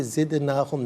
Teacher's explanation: دال ساکن ہے لیکن حرف قلقلہ ہے تو آواز لوٹتی بھی محسوس ہونی چاہیے